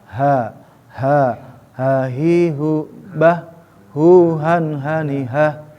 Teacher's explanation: Jadi ada ha aksol yang ada di tenggorokan bagian bawah